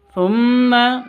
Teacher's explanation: mim tasdidnya berdiri sendiri artinya gunah musyadadah dengung dua ketuk